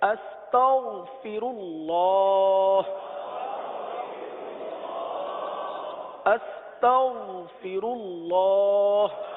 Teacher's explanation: غین کو اپنے مخرج سے ادا کریں گے اور پر ادا کریں گے جب جا کے یہ غین ادا ہوگا. ورنہ اس کو باریک بھی ادا کریں گے تو غین نہیں بنائیں گے، غین ہے ہی نہیں.